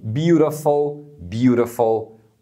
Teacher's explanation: a gente dá uma batidinha rápida da língua nesse ponto aí logo atrás dos dentes superiores